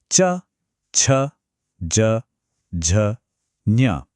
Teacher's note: ये आवाजें तब बनती हैं जब हमारी जीभ मुंह की छत, मतलब वो जो हार्ड वाला हिस्सा होता है ना, जिसे कठोर तालू कहते हैं, उससे टकराती है। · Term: तालव्य